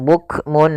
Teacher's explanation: izhar cara membacanya harus jelas suara nnya